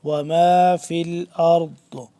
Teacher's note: وما فی الارض، را موٹا اور ضاد موٹا، اور ضاد کا مخرج بتا دوں ایک دفعہ کہ ضاد کا جو مخرج ہے وہ زبان کی بائیں کروٹ کو اوپر کی جو داڑیں ہیں ان کے ساتھ جب ٹچ کریں گے تو ضاد صحیح طرح سے ادا ہوگا